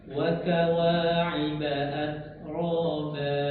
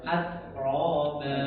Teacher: Jadi huruf ro itu dia ketika dia tafkhim tebal, jadi suara huruf ro itu ngumpul di dalam mulut